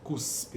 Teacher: em posição final de sílaba, as sibilantes são desvozeadas.